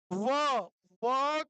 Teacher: व बोलते समय जो हमारा नीचे वाला ओष्ठ है नीचे वाला जो ओठ है वो हमारा ऊपर वाले दांतों से जाकर मिल रहा है। ऊपर वाले दांतों से मिलन कर रहा है।